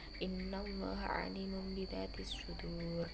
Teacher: Nun sukun atau tanwin bertemu dengan huruf ba dinamakan iqlab. Suara nun sukun atau tanwin menjadi mim serta berdengung di atas kalimat biasanya ada mim kecil.